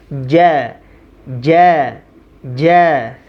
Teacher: huruf Jim itu bagian tengah lidah menyentuh langit-langit